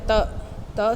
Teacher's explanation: जब आपने प्रोड्यूस की तो आपके दांतों से जो थोड़ी सी पीछे जगह है वहाँ पे एल्वियोलर रिजिस पे आपकी टंग लगेगी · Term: एल्वियोलर साउंड्स